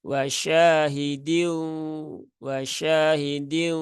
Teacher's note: tasdidnya sehingga tidak ada ee atau bunyi tanwinnya sudah hilang ya Sehingga semua masuk ke bunyi huruf wau yang mana wau itu ada di bibir ya tidak ada di rongga mulut sehingga bisa dipastikan suara itu enggak ada dengungnya